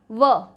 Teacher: दंतोष्ठ, दांत और होठ बोलकर देखेंगे व, यानी कि दांत के साथ होठ मिलेंगे